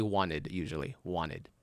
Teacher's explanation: We skip the t.